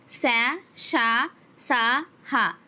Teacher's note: గాలిని బయటికి ఊదుతూ పలికే అక్షరాలు శ, ష, స, హ వీటిని మనము ఊష్మాలు అంటాము